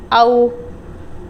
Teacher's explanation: واو ساکن سے پہلے زبر آ گیا ہے، تو اب اس کو ہم نے او کر کے نہیں پڑھنا، یعنی لمبا نہیں کر سکتے، اسٹریچ نہیں کر سکتے ، اس کو سمپلی پڑھیں گے او، لام زیر لی، اولی، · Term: واو لین